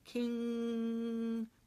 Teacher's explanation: The tongue is going up in the back, it's touching the soft palate, and it's actually sealing off any entry of air into the vocal cavity. So the air is being redirected up through the nasal cavity. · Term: nasal sound